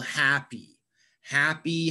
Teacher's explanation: we emphasize a syllable in a word and for example happy happy has two syllables happy and we emphasize the first syllable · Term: word stress